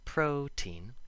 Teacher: we emphasize the first syllable but still make the t sound